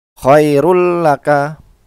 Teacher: bertemu dengan huruf lam maka dibacanya dilebur ke huruf lam dan tidak berdengung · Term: idgham bilagunnah